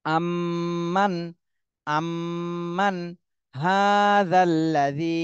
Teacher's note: নুন সাকিনের পরে ইজহারের হরফ হা এসেছে এজন্য এই নুন সাকিনে স্পষ্ট করে পড়তে হবে গুন্না করা যাবে না